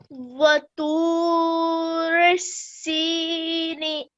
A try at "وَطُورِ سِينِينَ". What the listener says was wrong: Okay, that was much better. Keep practicing and it will get better, inshallah.